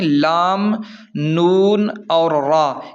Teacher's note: زبان کی نوک اور تالو سے 3 حروف ادا ہوتے ہیں، لام، نون اور را، ان تینوں کی مخرج زبان کی نوک اور تالو سے ہے۔